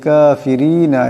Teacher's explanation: এখানে রা পাতলা আওয়াজে পড়তে হবে